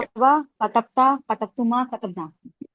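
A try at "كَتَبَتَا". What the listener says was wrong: हाँ, जो कतबता है ना उसके बा को साकिन मत कीजिए डुअल वाले में। कता बता, क्यों वो मैं इसलिए बोल रहा हूँ क्योंकि ये कंफ्यूजन होगी वरना।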